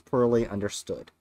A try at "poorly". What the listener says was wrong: poorly understood? Sound like you said pearly. As in pearly whites.